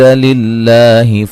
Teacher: لفظ اللہ کو باریک پڑھیں گے، پیچھے زیر ہے